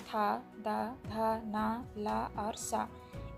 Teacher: दांतों से निकलने वाले आपके उच्चारण है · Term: दंत वर्ड